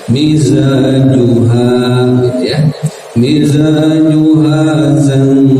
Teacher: Samarkan suara dan ditahan sekitar dua harokat. Ketika ditahan itu siap-siap lidah di posisi huruf jim, yaitu tengah lidah ya. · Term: ikhfa